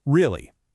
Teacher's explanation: For certainty, it's a sharp drop.